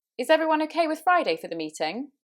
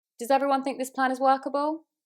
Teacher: So you'll hear there's that rise on the last word, and this is where we're asking for interaction. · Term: upward intonation